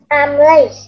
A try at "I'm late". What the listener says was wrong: Chữ chờ tận cùng nữa nha, I'm late.